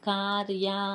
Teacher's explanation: కార్య అన్నప్పుడు నాలుక అంగెలిని తాకి ఒక స్ఫుట ధ్వని వస్తుంది